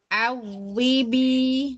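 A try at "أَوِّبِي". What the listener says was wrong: Jangan disentak, jangan terlalu disentak. Awibi.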